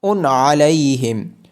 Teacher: تنوین کے بعد حروف حلقی میں سے عین ہونے کی وجہ سے حمزہ پہ اظہار ہوگا